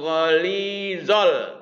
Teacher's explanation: alif lam koma ria, jadi harus dibaca jelas lamnya